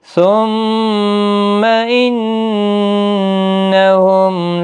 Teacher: ثم، میم مشدد پر گنہ ہوگا، نون مشدد پر بھی گنہ ہوگا